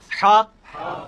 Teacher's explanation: हलवाई वाला जो हा है, ये वस्ते हलक से, हलक के दरमियान से, ये कभी आपको गले वाली टॉफी खाए ना, वो वाली आवाज एक्सैक्ट बिल्कुल क्लियर वहां से निकलती है ना, ये हा का मखरज हुई है, हा।